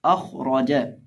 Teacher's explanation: हम खा को भी और रॉ को भी दोनों को मोटा करके पढ़ेंगे क्योंकि ये दोनों हरूफ़े मुस्तालिया में से हैं